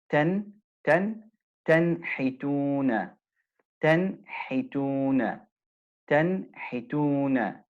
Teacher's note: There's no ghunna on the noon that has a sakina. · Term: idhar